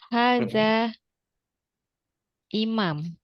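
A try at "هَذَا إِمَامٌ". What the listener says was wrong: Harokatnya jangan disukun.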